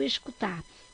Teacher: Qual é a sílaba mais forte? Então, é o tar.